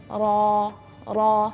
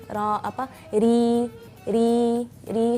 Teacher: ketika dia berharakat fathah atau dhammah, dia agak tebal, jadi lidahnya cenderung ujung lidahnya cenderung agak naik. Ra seperti itu. · kalau melafalkan ra yang tipis, lidahnya datar.